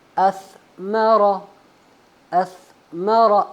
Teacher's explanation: सा का मखरज है जबान की नोक जब ऊपर वाले दांतों की नीचे से यानी नोक से लगे।